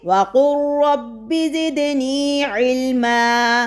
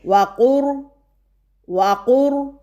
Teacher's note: تو یہاں پر آپ دیکھیے پہلا حرف ساکن اور دوسرا حرف مشدد ہے، جو کہ مخرج اور صفت میں دونوں قریب ہیں۔ تو ہم لام کو را میں مدغم کرتے ہوئے قوف کو ڈائریکٹ را سے ملائیں گے، جبکہ لام را میں مدغم ہو جائے گا